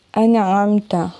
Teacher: جیسے انعمت، نون ساکن کے بعد عین آ رہا ہے، یہ حروف ہلکی ہے، یہاں پر غنہ نہیں ہوگا، نہ ہی حرف کو لمبا کر کے پڑھنا ہے، بلکہ نون کی آواز بالکل واضح نکلے گی اور اس کے مخرج پر ہی جائیں گی، یعنی زبان کی نوک مسوڑوں پر لگے گی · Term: اظہار